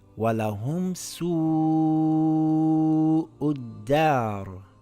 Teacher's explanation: We see a long vowel followed by a hamza in the same word. We lengthen it for 5 counts.